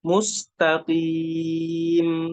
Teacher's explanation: mimnya diberikan sifat tawassutnya mengalir sedikit.